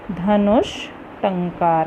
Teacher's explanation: विसर्ग के बाद ट आया है, टवर्ग आया है तो क्या हो जाता है? मूर्धन्य श हो जाता है, षटकोण वाला श हो जाता है।